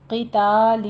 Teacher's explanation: قتال میں قوف کو پر پڑھتے ہوئے کسرہ کی آواز باریک رکھیے، تا کو پر نہیں کرنا، قطع نہیں کہنا، قتال۔